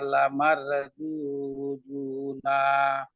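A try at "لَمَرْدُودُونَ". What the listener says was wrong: লামার বলছিলাম না, ওই যে র সাকিনের পূর্বের হরফে জবর থাকায় ওই র সাকিনটা এখন আমাদের মোটা করে পড়তে হবে। লামার বলেন দেখি। লামার দু দু না।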